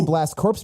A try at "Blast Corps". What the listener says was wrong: Blast Core. Blast Core is the name of the game. Blast Corpse is how it's spelled, but that's not how it's pronounced. The P is silent.